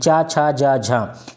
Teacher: चा, छा, जा, झा ये तालव्य होता है। ये स्पर्श संघर्षी व्यंजन भी कहलाते हैं। तालु से बोले जाते हैं चा, छा, जा, झा।